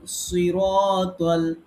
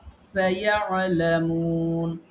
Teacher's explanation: সোয়াদ যখন আমরা পড়ি, সোয়াদটাকে আমরা পোর পড়ি। আর সিন যখন পড়ি, সিনটাকে আমরা বারিক পড়ি।